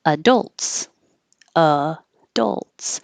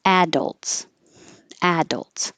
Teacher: it can have stress on the second syllable adults adults or you can put stress on the first syllable